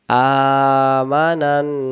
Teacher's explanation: না এক আলিফ এবং নুনে গুন্না হবে